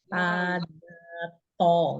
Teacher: Ujung lidah bertemu dengan pangkal gusi gigi seri atas.